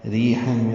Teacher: حا وسط حلق سے ادا ہوگا